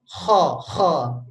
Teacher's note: Nah, kalau kita lihat di huruf kha dan ghain, pangkal lidahnya itu naik, Pak. Jadi lidahnya itu berbentuknya melipat gitu ke atas, ya. Dia naik pangkal lidahnya.